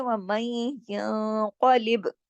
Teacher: قاف کو موٹا کرنا ہے اور ادغام کیا پیچھے، اور با پہ کلکلا کرنا ہے